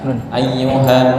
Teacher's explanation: Dengung, nunnya dengung. Mohon ditahan.